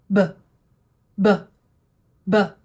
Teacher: Your lips still start together. They pop open with that little puff of air. But while you're doing this, your voice box has to be on.